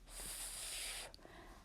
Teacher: when we say the sound F, our front teeth at the top rest very gently at the back of our lip. F, and our mouth is just open a little bit.